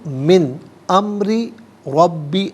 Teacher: من میں نون ساکن ہے، اس کے بعد حرف حلقی حمزہ آ رہا ہے، تو نون ساکن کو ناظرین اظہار کے ساتھ پڑھیں گے، اخفا یا غنہ نہیں کیا جائے گا۔